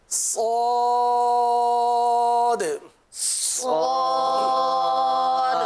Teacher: زبان کی نوک اور دونوں دانتوں کے اندرونی کنارے. اور اس حرف کو پر پڑھیں گے، حروف مستعلیہ ہے.